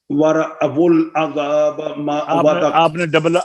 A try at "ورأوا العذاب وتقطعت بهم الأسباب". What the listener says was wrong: آپ نے پھر ڈبل کی ہے، دھیان سے.